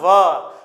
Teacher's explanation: व बोलने में दांतों का भी स्पर्श होता है और ओष्ठ की भी सहायता ली जाती है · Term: दंत ओष्ठ